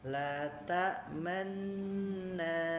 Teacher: Ismam itu adalah ketika kita masuk ke huruf nunnya, maka ada ee gerakan bibir yang dimonyongkan